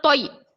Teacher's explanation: تو، زبان کی نوک کو سامنے کے دونوں دانتوں کے جڑ میں لگانے سے تو ادا ہوتا ہے، یا زبان کے بیچ کے حصے سے یا ادا ہوتا ہے۔ یا ساکن سے پہلے زبر یائے لین، یائے لین کو ہم نرم آواز کے ساتھ جلدی ادا کریں گے